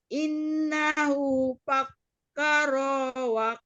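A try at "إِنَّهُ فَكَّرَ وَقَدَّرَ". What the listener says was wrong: Roknya pendekkan. Innahu fakkara wa qaddar.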